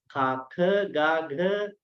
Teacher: We could say it has a primary place of articulation near the back of the oral cavity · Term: gutturals